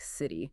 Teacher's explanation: quick tap rather than a hard aspirated T sound like in top. Exactly. This is a very common feature in American English, sometimes called a flapped T or tapped T.